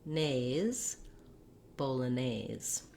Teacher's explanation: you might want to build from the back because our stress here is on nays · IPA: /ˌboʊləˈneɪz/